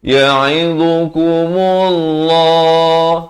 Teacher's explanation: Lafz jalalah dibaca tebal 2 harakat.